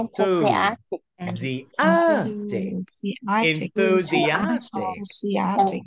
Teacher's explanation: Đó, nhấn âm thứ tư nha. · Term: trọng âm